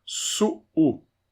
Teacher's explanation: É um U bem forte, tá? Não é uma semivogal.